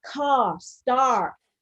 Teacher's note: Gen-Am is American English is rhotic. So wherever it sits, you get car, star, and it's far more pronounced.